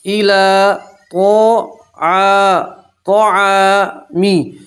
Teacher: ایلا کھڑا زبر بھی آپ ایک الف کے برابر کھینچ کر پڑھیں گے, یہ یا نہیں پڑھیں گے